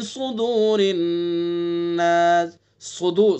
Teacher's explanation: स्वाद को पुर करके पढ़ेंगे, चूंकि हरूफ मुस्तालिया में से, पुर हर्फों में से स्वाद, तो इसलिए स्वाद को पुर करके पढ़ेंगे।